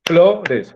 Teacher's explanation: ambas son palabras graves, o sea, es flores, o sea, el acento está en la penúltima sílaba